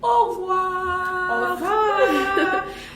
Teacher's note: So what it can be, you may not pronounce it and you may pronounce it, but however you do it, you could have au revoir. When I say au revoir, I didn't pronounce that E. It's the schwa sound that it may be pronounced.